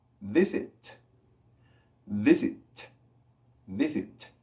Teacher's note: El sonido de T en inglés es viento, más que nada. No es tan golpeado como en español.